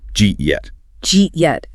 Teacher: The vowel in it eat gets swallowed into the affricate J sound. And the final T in yet isn't even fully pronounced. It's like a stop in the throat, right? Yes, it becomes a glottal stop, a blockage of air in the throat.